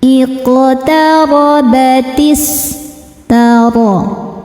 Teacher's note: Cara membacanya dipantulkan qafnya ini dengan pantulan yang kecil. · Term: qalqalah sughra